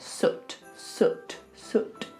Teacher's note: The lips have to be forward, the tongue is just resting behind the bottom teeth and it's lifting up a little bit.